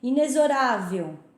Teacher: Inexorável, você pronuncia com som de Z e não de X